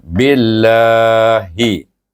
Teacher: Kemudian digabungkan dengan nama Allah, diidgham syamsikan ba dengan lam jalalah bunyinya bil. Kena baca dengan nipis sebab ba itu baris bawah. Walaupun nak nipis, walaupun dia dibaca dengan nipis, tepat dia 2 harakat.